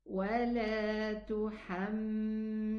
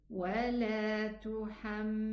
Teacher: the lam sukoon has a bayniyya, has tawassut